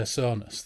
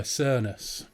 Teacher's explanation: So they pronounce O almost like a long ER.